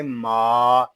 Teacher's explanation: کوشش کیجیے گا کہ میم کو ادا کرتے وقت ناک میں آواز نہ جائے، اس کو ماں اس طرح نہیں پڑھیں گے، اس کو پڑھیں گے ما۔